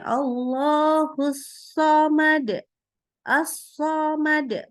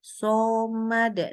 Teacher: membulatkan bibir ketika membaca huruf shad